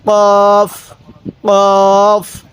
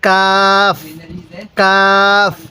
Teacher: কফটা ধাক্কা দিব কাফটা সোজা করে পড়বো কোন ধাক্কা দিব না